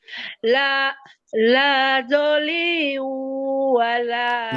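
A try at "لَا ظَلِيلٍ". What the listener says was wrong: Liliu. Ada dua Bu. Liliu. La dhaliliu wala yugni.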